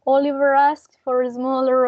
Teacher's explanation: This is a short sentence that it's full with linking R.